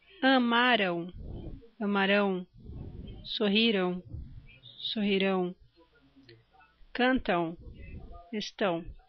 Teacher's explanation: Apesar delas terminarem em M, o som fica igual às que terminam em ão